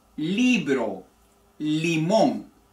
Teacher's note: la i con los labios todavía más cerrados Pero estirados